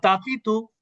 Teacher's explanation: তেমন পার্থক্য নাই বাংলার সাথে এখানে। আমরা বলবো তাতি তু, এটা জিহ্বার আগা উপরের দাঁতের গোড়া।